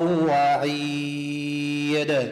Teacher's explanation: بجبار فذكر را مرققة فذكر بالقرآن من إدغام من يخاف وعيد دال جاء مكسور وقفنا عليه صار ساكن نقلقله